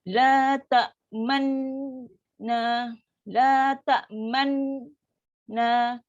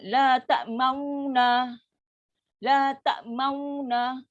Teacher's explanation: Dengung tu berlaku di masa makhraj tu. Bukan berlaku masa kita muncung. Muncung tak ada dengung.